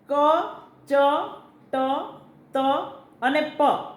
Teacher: એ અઘોષ અલ્પપ્રાણ વ્યંજન થયા